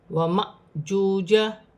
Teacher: الف پر جزم کی حرکت ہے، الف کو حمزہ بھی پڑھا جائے گا اور جھٹکے کے ساتھ پڑھا جائے گا